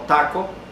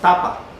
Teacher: tenemos entonces la oclusiva dental o alveolar sorda